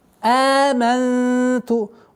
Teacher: Удержание назализации в размере двух огласовок. Здесь ихфа.